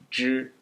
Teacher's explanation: Then finally, to a retroflex, 知, where your tongue the tip of your tongue is up on your hard palate here